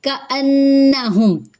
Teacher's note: کأنہم، کا حرکت لمبی نہیں ہوگی، حمزہ کو نون سے ملائیں گے، نون پہ تشدید کی وجہ سے غنہ کریں گے، حرکات لمبی نہیں کریں گے۔